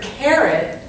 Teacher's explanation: care gets more emphasis than it.